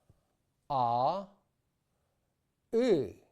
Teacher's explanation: Notice how the shape of my mouth on the outside does not change as I move from A to E. The change occurs inside my mouth as my tongue moves up towards the roof of my mouth towards more of an E position.